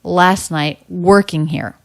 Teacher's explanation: here stress unstress stress unstressed unstressed last night working here so the ing ending and the word here flatter lower in pitch coming down in vocal energy